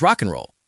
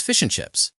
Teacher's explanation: And the biggest victim of elision is the word and. We almost never say the D.